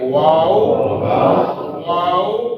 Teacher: دونوں ہونٹوں کو گول کرنے سے واو ادا ہوتا ہے، واو۔ آج کے بعد وا نہیں پڑھنی ہم نے، اس کو واو پڑھتے ہیں، اور دونوں ہونٹوں کو گول کر کے واو واو، تھوڑا سا اگر کھینچ کے بھی اس کو واو واو۔